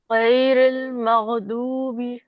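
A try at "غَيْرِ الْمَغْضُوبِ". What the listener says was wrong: دیکھیے مغ مغ از leaving the مخرج. You have to stay on دا مخرج. مغ مغضوبی. ایک مرتبہ اور مغ کو بے شک ایگزیجریٹ کر دیں. قلقلہ نہیں ہونے دینا.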